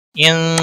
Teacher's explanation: نون ساکن کے بعد حروف اخفا کا سین آیا ہے اس لیے یہاں پر اخفا حقیقی ہوگا۔